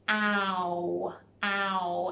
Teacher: It is a oo at the end. O and oo together make the ow sound.